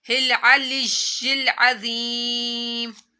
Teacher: या साकिन से पहले जेर आ रही है तो या यहाँ पर लंबा होगा